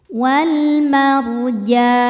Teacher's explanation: Ra sukun dibaca secara tafkhim sebab sebelumnya berharakat fathah. Cara bacanya ra dibaca tebal.